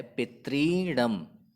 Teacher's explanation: यहाँ पे भी पहले शब्द के अंत में ह्रस्व ऋकार और दूसरे शब्द के प्रारंभ में भी ह्रस्व ऋकार है। दोनों ह्रस्व ऋकारों को मिलाने पर हमें दीर्घ ऋकार यह परिवर्तन प्राप्त होता है तथा संधि का जो रूप है वह है पितृणम।